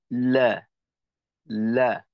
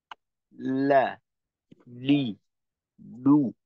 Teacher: লাম যখন আমরা উচ্চারণ করব তখন জিহ্বার আগাটাকে নিচের দিকে ছাড়া যাবে না, বরঞ্চ একটু ঊর্ধ্বমুখী করা।